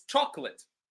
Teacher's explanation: chop is louder than the rest of the word